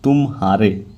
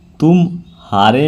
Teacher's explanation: उदाहरण के लिए दिया है कि तुम्हारे के उच्चारण में म के पश्चात ह पर शीघ्र संक्रमण होता है, यानी तुम्हारे तुरंत आ गया, किंतु तुम्हारे में पूर्वत संक्रमण नहीं होता है। म और ह के बीच में कुछ विराम या अवसान होता है, इसी विराम को हम संगम कहते हैं।